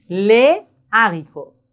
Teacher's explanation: quand on a le H aspiré, on ne doit pas faire la liaison. C'est comme les consonnes.